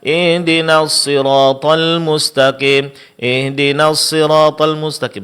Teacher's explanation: Di sini terjadi kesalahan ha nyaris tidak terdengar karena diucapkan dengan suara yang lemah pada makhrajnya